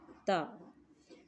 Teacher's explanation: زبان کی نوک اوپر کے دانتوں کی جڑ سے لگے تو تا ادا ہوتا ہے۔ زبان کی نوک کو آپ نے اوپر والے دانت کی جڑ سے ٹچ کرنا ہے۔